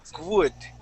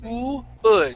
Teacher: you're gonna start off with an ooh sound, and you're gonna use that ooh to slide right into the rest of the word